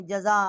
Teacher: آگے حمزہ ہے، بڑی مد ہے، 4 الف جتنا آواز بلند کی ہے